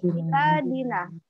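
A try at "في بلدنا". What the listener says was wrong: Fi baladina. Ini bentuk mufradnya, ini tunggal. Baladun, jamaknya biladun. Lamnya panjang. Kalau bentuk jamaknya lamnya panjang. Kalau ini mufrad. Balad. kita bisa menentukan harokatnya itu juga dilihat ini panjang pendeknya apa kode itu.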